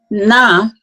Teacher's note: is a dental nasal sound